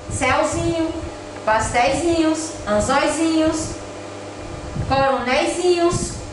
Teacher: o ei, ele não é tônico, ou seja, ele não é pronunciado com força